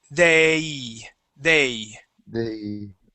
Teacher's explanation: not just an A sound, okay, but we have to finish that sound, and we finish that with an E sound · with that A sound, whenever we say that, it usually has an E sound at the end